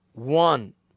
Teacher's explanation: unusual ए की एक और example, the word वन sounds as if it begins with the consonant W